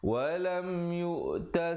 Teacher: lam nak ke yu juga jangan lambat, di situ izhar syafawi